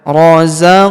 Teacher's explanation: huruf qof berharakat sukun kita pantulkan atau kita qalqalahkan.